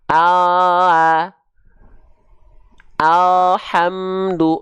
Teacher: huruf L alfabet itu yang kita sentuhkan hanya bagian ujung lidah kita saja